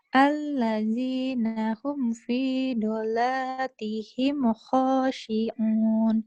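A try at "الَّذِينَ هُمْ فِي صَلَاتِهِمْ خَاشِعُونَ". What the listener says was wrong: Bukan dola, kan ada titiknya. Sholat. dola, sholat. Bukan pi dola, pi sholatihim.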